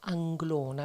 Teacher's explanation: è tutto fluido, c'è la N, la L, ci sono delle belle vocali aperte e quindi è un nome che veramente esprime una grande sonorità, una sonorità fluida, non no, delle consonanti forti, taglienti.